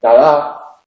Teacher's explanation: Si decimos dedo o decimos dada, al decir dada, la primera D es oclusiva, la segunda es aproximante. La lengua se aproxima a los dientes, al nacimiento de los dientes, pero no entra en contacto. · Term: la D aproximante